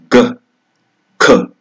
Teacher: And the third kind of stop consonant are velar stops. That means the back of the tongue presses against velum or velum or the soft palate and causes a blockage and release